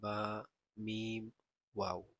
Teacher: বা উচ্চারিত হয় দুই ঠোঁট হতে